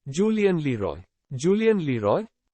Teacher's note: We'll put stress on Roy.